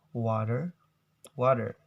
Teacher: In Americans, they usually pronounce this word as water, water. So the T sounds become D, water. But in British accents, they will pronounce in different, like extremely different pronunciations.